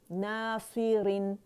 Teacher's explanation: روانی میں بھی را جو ہے وہ باریک پڑھی جا رہی ہے